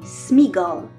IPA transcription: smigɔl